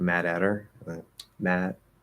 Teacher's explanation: it usually comes out as a flap D into an H. So like Mad Hatter, Mad.